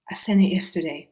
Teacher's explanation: sent it yesterday so instead of saying i i sent it he reduces i to ah which is what very often happens in fast speech um and then the t sounds are dropped both on scent